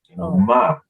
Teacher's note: And then ma, you know, you say ma like a falling tone when you say no